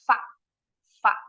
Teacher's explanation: Nah kalau F hanya keluar udara dari sela-sela Gigi